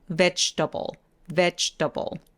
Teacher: 저 중간에 있는 저 G, E 소리 부분에서 입술 쭉 내미는 것도 잊지 말아주세요